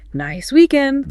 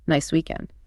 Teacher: a natural friendly intonation with a slight noticeable lift at the end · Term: rising intonation